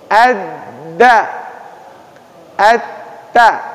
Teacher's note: ujung lidah bertemu dengan tempat tumbuh gigi seri